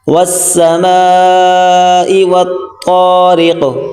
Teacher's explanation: تو کو موٹا کریں گے، را کو باریک اور قاف کو موٹا کریں گے